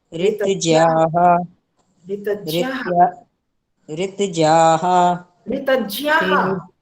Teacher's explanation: ज में थोड़ा य की भी आवाज आती है